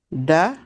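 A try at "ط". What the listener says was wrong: not da, it's to.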